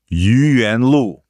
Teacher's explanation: Yuyuan, that's 2 second tones.